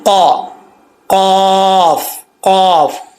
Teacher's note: تو یہ قاف جو ہے دو نقطوں والا پر پڑھا جائے گا موٹا پڑھا جائے گا. زبان کی جڑ اوپر والے تالو سے لگے یعنی جو گوشت کا لوتھڑا لٹکا ہوتا ہے اس کے ساتھ نرم جو تالو ہے اس کے ساتھ یہ زبان کی جڑ لگے گی تو یہ قاف پڑھا جائے گا فل ماؤتھ ٹھیک ہے.